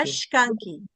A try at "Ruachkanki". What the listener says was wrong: Ruashkanki no. En la variante nuestra es Ruachkanki. Pegado a tu paladar, la lengua debe estar pegado al paladar.